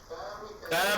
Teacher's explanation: अ में हमारी जिह्वा किसी उच्चारण तंत्र को, किसी भी उच्चारण अवयव को उच्चारित नहीं करती है, बल्कि सीधे आवाज कंठ से आती है। क भी कहते हैं तो आवाज कंठ से आती है, इसलिए इसका उच्चारण कंठ से होने के कारण ये सारे वर्ण कंठ वर्ण है।